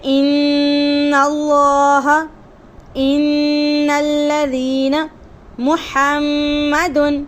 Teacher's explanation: غنہ کے ساتھ خود کوئی حرف ادا نہیں ہوتا اس جگہ سے، یعنی کہ وہاں سے صرف غنہ ہی نکلتا ہے، کسی حرف کی ادائیگی نہیں ہوتی، تو اسے کہتے ہیں خیشوم، یعنی کہ غنہ کرنے کی جگہ۔ غنے کا مخرج کہاں سے ادا ہوتا ہے؟ اس حصے سے جو نرم حصہ ہوتا ہے